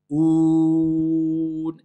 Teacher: on ne dit pas on avec le nez. Ou. Et ça doit être un ou clair.